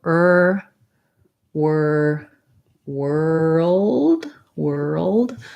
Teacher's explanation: if you can say were then to make it into world you add a dark l which has a little bit of a schwa sound and then a d sound